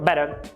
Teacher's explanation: você vai apagar esse fonema caipira, essa retroflexa